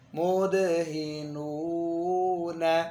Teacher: اب 2 نونوں کے درمیان واو کو آپ نے ناک میں جانے سے بچانا ہے. نون دونوں پہلے بھی ناک میں جائے گی، بعد میں بھی. درمیان میں آپ نے جب لمبا کرنا ہے تو اس کو باہر رکھنا ہے ناک سے.